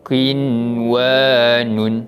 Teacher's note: Pertemuan mereka juga di antara nun mati bertemu dengan huruf waw tu berada di dalam satu kalimah, maka dia menjadi bacaan izhar mutlak. Cara bacaannya, kita kena jelaskan bunyi bacaan nun mati tanpa dengung.